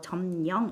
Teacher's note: 미음에다가 역시나 리을이 더해져서 니은이 됐죠